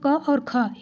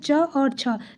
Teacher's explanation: अघोष व्यंजन यानी उसमें किसी प्रकार का कंपन नहीं होता है